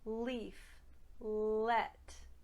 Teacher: As a standard American speaker, when I make my L sound, my tongue is touching the tips of my 2 front teeth